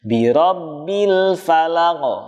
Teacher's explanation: jadi jelas huruf lamnya tidak boleh sampai terpantulkan